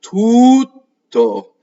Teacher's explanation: So you want the oo to be very long and you have to have split-second timing and then just stop. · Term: double T